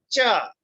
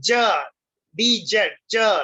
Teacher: These sounds begin like stops with a complete blockage of air closer of the vocal tract and end with restricted flow of air like fricatives. English says the two affricates, that is cha, t और इसके साथ ये s type का जो बना हुआ है, this is cha, cha, ठीक है, like a church, and ja, dj, ja, like a judge.